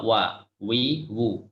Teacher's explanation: Kalau wawu tunggal, ya, wawu munfarid maka keluarnya dari dua bibir.